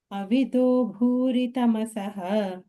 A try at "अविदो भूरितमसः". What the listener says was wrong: Let's go a little higher. It has become so dull, I feel.